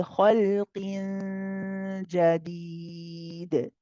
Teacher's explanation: my middle of the tongue is already elevated towards the roof of the mouth for the makhraj of the jim. However, I am not touching the top. I'm just close to touching the upper palate. · if we stop, we do the qalqala of the dal, we bounce the dal.